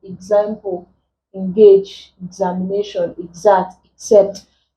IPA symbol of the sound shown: ɪ